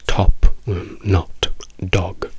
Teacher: Tutte queste hanno la O aperta, molto veloce, molto corta.